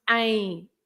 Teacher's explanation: when the M is at the end, you don't pronounce that as an M. The M is there just to make the nasal sound of the vowel.